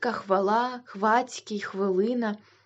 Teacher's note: у тому українських словах на місці де ніби хочеться вимовити ф стоять хв